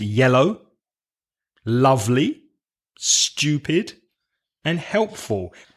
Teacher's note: so I would stress the first syllable with with adjectives that have two syllables more examples yellow lovely